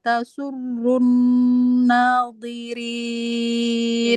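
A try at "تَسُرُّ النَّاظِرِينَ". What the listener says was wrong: Ya, tasurrun nadhi. Ru sama zi-nya tebalkan lagi. Nah, itu huruf ujung lidahnya agak terlalu ditekan, Mbak. Nah, coba lebih lembutin lagi ketika nempel ke ujung gigi dari atas.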